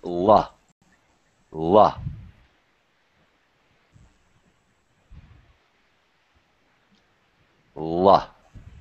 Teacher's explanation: On the L sound, the tongue is touching, and it's touching at the front of the mouth, on the bump just behind your teeth.